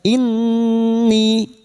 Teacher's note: Ghunnah musyaddadah, bersenandung tiga harakat. Inni, kasrah disusul ya sukun, dua harakat mad thabi'i.